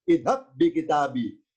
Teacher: Pertemuan dua ba berlaku idgham